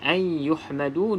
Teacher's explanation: nun kosong, selepasnya bukan lam ataupun ra, maka kita baca dengung. Dekat sini ada hukumnya bukan mat.